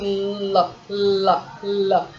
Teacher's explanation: your tongue is touching the alveolar, that is the ridge behind your incisor